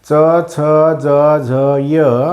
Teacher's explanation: जीभ आपल्या टाळूलावरच्या बाजूला लागते म्हणून त्याला टालव्य वर्ण म्हणतात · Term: तालव्य वर्ण